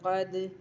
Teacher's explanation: عید دال زیر عید، دال ساکن حروف قلقلہ میں سے، اس لیے یہاں پر قلقلہ ہوگا